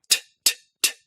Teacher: In English, T's are made with the tip of your tongue pulled away, back from your upper teeth, onto your alveolar ridge.